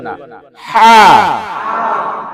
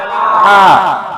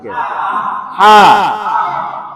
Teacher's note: আর এটা বলার সময় বাতাস বের হইবে না, হা। চাপ দেন গলায়, হা, এবং গলার একেবারে শেষ থেকে হা।